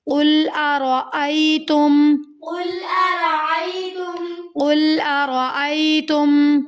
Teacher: را یہاں پر موٹا پڑھا جائے گا، پور پڑھنا ہے کیونکہ را کے اوپر زبر کی حرکت ہے.